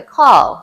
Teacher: sometimes they don't have the R at the end, like car, they'll say call